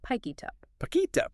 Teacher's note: the T at the end of it jumps to the U in up. Acoustically, it naturally morphs into pick it up. · Because the mouth wants to keep the air flowing, the final consonant literally jumps across the physical space between the words, and attaches itself to the front of the next word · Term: consonant-to-vowel linking